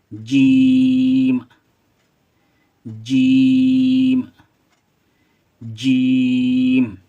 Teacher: जब जीम को पढ़ेंगे तो जबान जो है बीच का सिरा ऊपर वाले तालों से टच होगा।